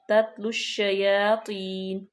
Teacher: دونوں تا باریک پڑھیں گے لام کو شین میں ملائیں گے